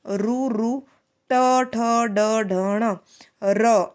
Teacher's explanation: मूर्धन्य में हमारी जो टंग है, जो जीभ है ना, वो मुड़ जाती है बोलते टाइम। रू रू, ट ठ ड ढ ण, र, इस तरीके से बोल के देखना पड़ता है।